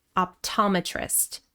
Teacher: First we have optometrist. Stress on the second syllable.